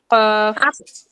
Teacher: জিহ্বার গোড়া তার বরাবর উপরের তালুর সঙ্গে লাগিয়ে ২ নোক্তাওয়ালা কফ